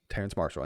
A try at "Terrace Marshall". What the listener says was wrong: Terrace, not Terrence.